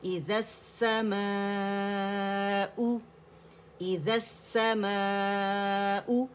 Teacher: حمزہ deepest part of the throat سے ہو رہا ہے